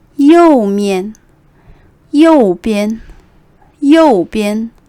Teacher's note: the first words are the ones that are being stressed the second character is usually a little bit neutral